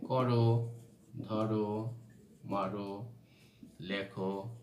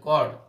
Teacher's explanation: আমি কিন্তু বলছি না কর, আমি কিন্তু বলছি না ধর, আমি কিন্তু বলছি না মার। এখানে প্রত্যেকটা অটা ওর মতো উচ্চারণ হয়েছে, অর্থাৎ সংবৃত উচ্চারণ হয়েছে।